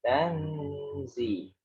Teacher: Jadi tidak hanya nunnya dibaca terus pindah ke zi, tapi ditahan karena dia ikhfa.